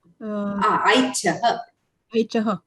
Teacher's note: The sakara comes, which becomes the visarga.